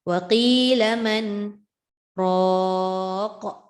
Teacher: Sebab daripada bacaan Imam Hafs an Asim, Tariq Syatibi membaca dengan saktah. Jadi dia separate kan. Dia asingkan bunyi antara man dengan ra.